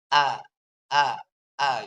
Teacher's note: huruf Hamzah ini kan huruf tenggorokan yang paling dalam